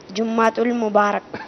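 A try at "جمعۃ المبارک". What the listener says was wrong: मेरे मदनी मुन्ने देखें, इस तरह कहेंगे, जीम पर भी पेश है, मीम पर भी पेश है। जुमुआ क्या कहेंगे? जुमुआ क्या कहेंगे? जो जुम्मा जुम्मा करते हैं वो सही। कुरान पाक में एक सूरत भी है ना जिसका नाम है सूरह जुमुआ, ठीक है? तो जुमुआ कहना चाहिए।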